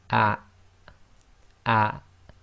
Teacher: the hamza acts as the glottal stop in Arabic, and you should feel a slight blocking of the bottom of your throat